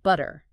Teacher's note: the T at the end softens almost like a d so it sounds more like butter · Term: lenition, softening of T sounds